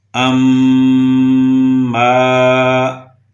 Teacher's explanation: اس میں میم کے اوپر شد تھی، ہم نے اس کے اوپر اپنی آواز کو ناک میں روکے رکھا، اسے غنہ کہتے ہیں۔